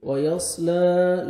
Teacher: وَيَصْلَى، لام کو منکھڑے زبر ہے، الف مدہ کے قائم مقام ہے، 1 سیکنڈ آپ نے لام کو کھینچنا ہے